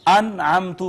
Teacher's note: نون ساکن یا نون تنوین پر اظہار کرتے ہیں، یعنی اس کو بس ظاہر کر کے پڑھتے ہیں. اس کو ہم انعمتو پڑھیں گے، نون پہ ٹھہریں گے نہیں.